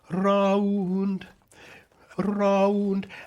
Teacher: So if you're going round in proper posh English singing, you have to go round, round, and you have to do this very clear R with it, and then clear at the end, which is almost like light as a T, but never there.